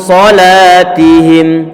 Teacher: Ini huruf setelahnya berupa huruf shad, tentunya dia tebal, maka bacaan ikhfa-nya perlu dibuat tebal dari segi suaranya.